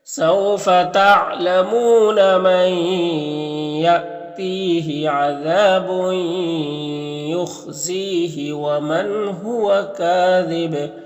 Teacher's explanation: وقف کریں گے تو با میں قلقلہ ہوگا